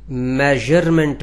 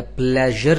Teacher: जुबान का अगला हिस्सा देखिए टच ऊपर हो रहा है और यह तालू के साथ दांतों के पीछे जो ऊंचा उभार होता है उसके साथ या उसके करीब जाके टच करता है तालू के साथ और यह आवाज पैदा होती है और इसी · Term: ज साउंड